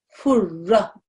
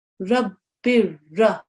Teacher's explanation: The nasal sound is dropped. You treat this as if there's just a single dhamma on the top.